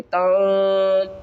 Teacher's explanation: یہاں پر اخفا کریں گے یعنی نون کی آواز کو چھپا کر پڑھیں گے